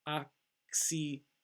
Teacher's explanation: The first one has a K sound, the second one has an S sound.